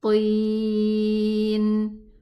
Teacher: 4 counts for the ya because it's مد عارض للسكون, because of the sukun. Because this now, when we stop on the noon, we pronounce it a sukun letter.